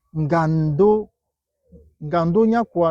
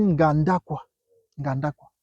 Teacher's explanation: Donc le O a été élidé et ça a donné Nganda quoi.